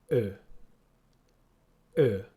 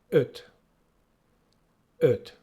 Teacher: Sounds a little bit like sir or her in English, but see, my lips are a little bit more closed.